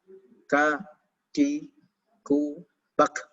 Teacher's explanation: hams ini sangat terdengar atau udara ini keluar sangat terdengar ketika kaf dalam kondisi sukun atau sakinah.